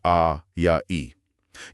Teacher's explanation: दीर्घ स्वर जिनमें दुगना समय लगता है। जैसे आ या इ।